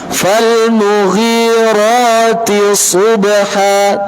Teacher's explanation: Pakai shad. Maka tebalkan, ikhfakan. Dia mempunyai sifat isti'la.